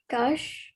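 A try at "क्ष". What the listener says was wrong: So this is ksha. You have to say them together. Ksha.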